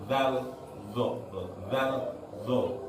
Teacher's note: Makhrajnya sama, ngeplek sudah, nggak ada perbedaan sama sekali. Ujung lidah nempel ke ujung gigi yang atas.